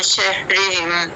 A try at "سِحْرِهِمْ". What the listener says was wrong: سحرهم نہیں، سے نہیں، سی سحرهم